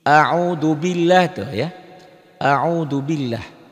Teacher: Lafaz Allah ini dibaca tipis. Ya, tarkik.